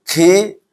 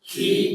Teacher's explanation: Qaf sama kaf. Ya, beda sedikit. Makhrajnya sama, cuma kalau kaf agak ke depan sedikitnya, agak maju ke depan